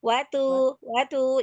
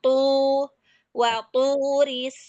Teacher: tu itu arah suaranya ke atas, pangkal lidahnya terangkat sehingga huruf thnya terbaca tebal. Kalau dia tidak tebal, nah ee maka dia akan menyerupai huruf ta. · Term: tho